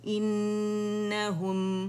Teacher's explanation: میم ساکن پہ آپ نے آ جانا ہے مکمل طور پہ، پورے دونوں ہونٹوں کے خشکی سے آپ ملائیں گے تو اس میں جو ہے جو میم ہے اس کا اظہار ہوگا، ٹھیک ہے. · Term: اظہار شفوی